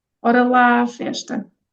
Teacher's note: There was a double A there. And sometimes we even have triple A's, so one after the other, we just combine and make it slightly longer